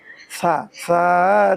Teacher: জিব্বার আগা সামনের উপরের দুই দাঁতের আগা থেকে শীষ ছাড়া নরম করে পড়তে হয়।